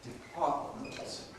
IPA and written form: dɪˈpɑːtmənt (department)